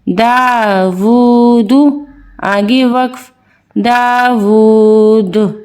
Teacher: حروف کلکلہ کتنے تھے یہ آپ ذہن نشین ہوگا بالکل اگر آپ نے پچھلی تختیاں ہماری پڑھی ہیں. تو یہ دال حروف قلقلہ میں سے ہے جس کی آواز وقف کی صورت میں پلٹ کر آتی ہے